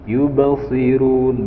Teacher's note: ba berharokat sukun, di situ mengandung hukum bacaan qalqalah yaitu dipantulkan. Qalqalah di sini disebut qalqalah sughra karena berada di tengah-tengah kalimat.